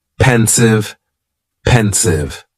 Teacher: just two syllables and the stress is on that first syllable